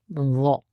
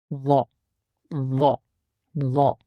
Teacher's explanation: जुबान की टिप को सामने दांतों के सिरों पर लगाएंगे और इसकी आवाज को पढ़ेंगे